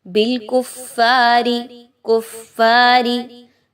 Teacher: را کے نیچے زیر ہے اس را کو باریک پڑھیں گے